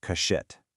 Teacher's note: When a visarga is followed by the ch sound, the visarga mathematically transforms into a sh sound. Step 3, we just combine them to get our final word, kashit.